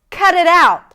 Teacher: The stress is on out, the last part of the phrasal verb.